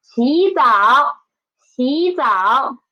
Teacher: We should change the former third tone into second tone, right? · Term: tone Sandy